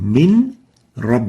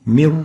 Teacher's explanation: the noon would be totally merged into the ra and that will make the noon disappear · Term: assimilation